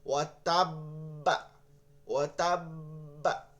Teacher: এবার বাটা কিন্তু আপনি দুইবার জজম দিছেন, তাহলে কলকলা দুইবার করবেন একবারে, তাহলে প্রথমে ধরে রাখবো দুইবার, এরপরে ছাড়বো ওই পরিমাণে